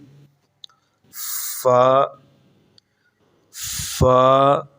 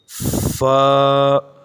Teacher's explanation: یہ حرف فا جو ہے یہ ہونٹوں سے ادا ہوتا ہے